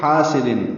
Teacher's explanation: اسی طرح ومن شر آگے ہے حاسد, ہا وسط حلق سے اور الف مدہ ہے, 2 حرکات لمبا کریں گے, سین سیٹی جیسی آواز سے.